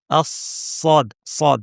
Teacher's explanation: উহ, এটা হচ্ছে হায়ের আওয়াজ। তারপরে সি ভারী করে এবং বলতে হবে। জিহ্বার শীর্ষ নিচের পাটি দাঁতের গোড়ায় লাগিয়ে সদ, সদ, হ্যাঁ?